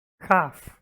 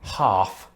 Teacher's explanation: in neither case do we pronounce the L as far as I'm aware